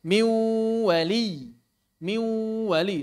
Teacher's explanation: Bunyi oralnya adalah wau, bunyi nasalnya adalah nun. · Jadi suaranya di mulut ada waw, di hidung ada nun.